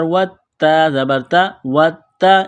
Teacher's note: اس تا کو دبائیں گے، سختی کریں گے تشدید کی وجہ سے